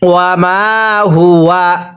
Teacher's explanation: এই মিমের মধ্যে আমরা এক আলিফ টান দিব। জবরের পরে খালি আলিফ এক আলিফ টানতে হয়।